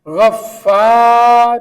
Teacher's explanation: اس لفظ میں شد فا کے اوپر ہے تو فا کو 2 بار پڑھا گیا ہے